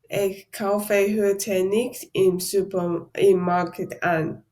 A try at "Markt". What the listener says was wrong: Be careful, in German, we don't say market, but we say Markt. There is no letter E between K and T, so that is der Markt.